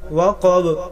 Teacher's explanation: وقب بحالات وقف قلقلہ ظاہر ہوگا